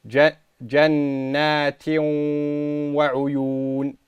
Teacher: we apply the غُنَّة by holding it for two harakatat